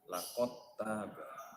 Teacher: dal mati bertemu dengan ta, dalnya dimasukkan ke huruf ta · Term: idgham jinsi